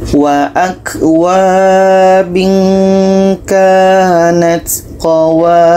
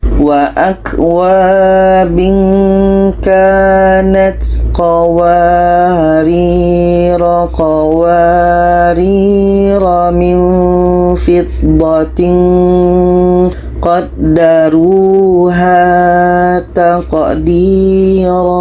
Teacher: Kalau berhenti dibaca panjang, tapi kalau kita teruskan ke ayat setelahnya itu dibaca pendek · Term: sifir mustatil